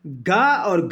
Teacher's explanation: गा और घा आप बोल करके देखिए, ये आपके कंठ से उच्चारण होगा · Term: कंठ ध्वनि